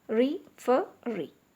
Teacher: the stress is on the last syllable in referee